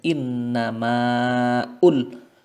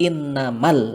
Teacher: Alif ketika berada di tengah kalimat seperti itu tidak dibaca jadi kita membacanya bukan Inna pun tetapi Inna maal langsung kita